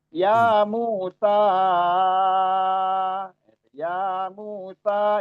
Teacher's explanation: ya-nya 2 harokat, mu-nya 2 harokat, sa-nya 4 sampai 5 harokat, mat jaiz munfasil